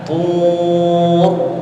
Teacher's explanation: ra-nya ketika kita wakafkan ya dalam keadaan tebal